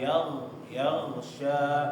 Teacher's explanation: huruf gha jangan sampai ketika membaca mati itu kayak huruf G ya, yaghsha. Tapi dia kasih aliran suara